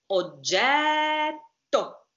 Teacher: Stop phonation for a while. Put the tongue on the palate and double T. Strong.